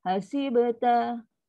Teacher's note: Dia ada sifat qaqalah. Tengah-tengah pula tu. Ada qaqalah sughra. Sughra dia lembut.